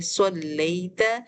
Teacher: تا ہم موٹا نہیں پڑھیں گے، اپنے ہونٹوں کو پھیلا کر حروف کو باریک کریں گے